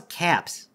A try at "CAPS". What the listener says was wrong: You pronounce the A like an O, like it's French.